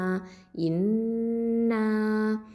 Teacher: ஹம்சா அப்படிங்கிறது அக்சல் ஹல்க்கு கீழ் தொண்டையிலேருந்து வரணும். நூன் அப்படிங்கிறது தரஃபுல் லிசான் நுனினாவை எழுத்து.